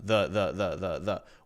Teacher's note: Now the is, we could say the schwa sound, the. We're not putting much stress on it, just a relaxed vowel sound.